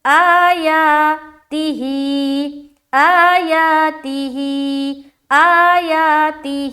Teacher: آگے حمزہ کھڑا زبر آ، ایک الف کی مقدار کھینچنا ہے، یا کھڑا زبر یا، اسے بھی ایک الف کی مقدار کھینچنا ہے